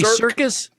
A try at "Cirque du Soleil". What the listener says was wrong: Like Cirque without the us. DE. Soleil.